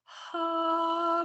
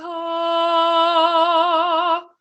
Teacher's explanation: Forward versus back, and that's sort of a distinction of where the tongue is. Clear versus breathy, that's sort of easy to hear.